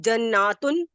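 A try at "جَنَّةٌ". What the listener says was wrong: पहले वाहिद में आप वाहिद में आप लॉन्ग नहीं करेंगी, जन्नतुन, क्योंकि नून पे सिर्फ जबर।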